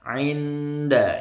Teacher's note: 'Inda ini nun sukun ketemu dal, ikhfa. 'Inda nggak boleh putus.